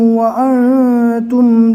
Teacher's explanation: وَأَنْتُمْ نون کو ناک میں پڑھنا ہے